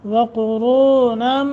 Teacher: وقرونم قاف را دونوں موٹے ، نم نون تنوین کے بعد با ہے، اقلاب کا قاعدہ